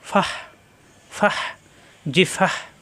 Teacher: গোল তা অকফ হলে হা হয়ে যায়